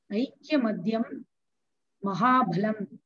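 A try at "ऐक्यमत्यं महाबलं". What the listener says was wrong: It is not Madhyam. Where is Madhyam? There is the problem of hard consonant and soft consonant. That has to be correct. Aikyamatyam. It is not Madhyam. That is Madhyam. Madh is different. You're making all the hard consonant into soft consonant.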